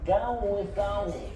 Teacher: Wutai tapi lidah, hujung lidah keluar macam ni. Hujung lidah keluar sikit.